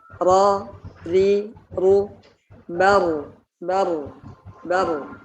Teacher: ketika membaca huruf ro, suaranya keluar dari tengah-tengah ujung lidah. Dia nempel ke atas semuanya, ujungnya yang terbuka di tengah-tengah.